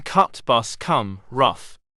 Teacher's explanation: spread Hollow right pointing triangle as in Cut bus come rough this is a central vowel and one which is more open than mid-range the lip position is neutral